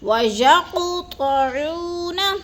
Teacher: وَيَقْطَعُونَ مَا أَمَرَ اللَّهُ بِهِ أَن يُوصَلَ، وَيَقْ کی قاف پر جو ہے قلقلہ کریں گے، قاف ساکن ہے اور حروف قلقلہ میں سے ہے تو قاف کو ہم نے ہلا کر پڑھنا ہے